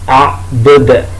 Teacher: Di akhir ayat dalnya itu dal yang dibaca qalqalah, a'bud, jadi dibaca qalqalah.